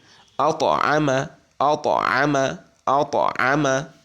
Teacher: ত সাকিন দিলে তাসদিদের মত উচ্চারিত হবে না কিন্তু বরং কলকলা হবে তটা হালকা উচ্চারিত হবে